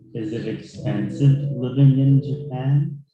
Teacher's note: So we raise our voice in expensive. This is rising intonation.